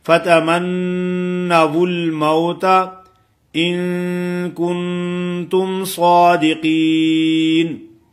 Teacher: صاد کو موٹا کرنا ہے، قاف کو بھی موٹا کرنا ہے